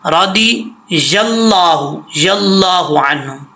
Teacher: یہ ضاد کے بعد یا ہے، یا کو اللہ کے نام سے کنیکٹ کرنا ہے،